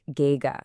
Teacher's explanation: Now the tone here is the first tone. The exact same highle tone we used for mother.